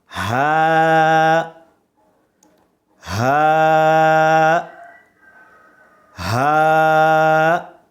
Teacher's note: اس کو ہم حلق کے نچلے حصے سے ادا کریں گے, حلق کے نیچے سے.